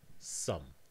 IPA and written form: sʌm (island)